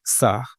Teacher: आपकी जीभ का जो अग्रभाग है, वो आपके दाँत को छूने का प्रयास करता है, लेकिन छूता नहीं।